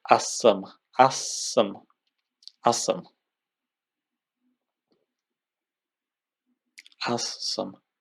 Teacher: here very clearly you can see that the Z becomes voiceless. So it becomes from Z, it turns into S. That's also because the following sound is voiceless as well.